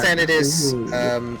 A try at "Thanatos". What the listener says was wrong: No, it's an A. It's an A, not an O.